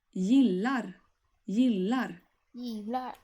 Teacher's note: The final R sound is not very strong, but it has to be there when somebody is actually doing it.